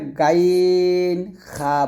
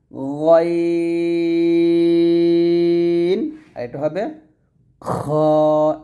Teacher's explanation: খ বলতে হবে তবে খ টা মোটা করে উচ্চারণ করতে হবে এখানে গইন এবং খ দুইটাই মোটা হরফ দুইটাই মোটা উচ্চারণ করতে হবে